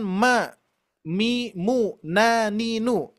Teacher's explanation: mim ketika diberikan harokat saja itu sudah masuk hidung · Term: gunnah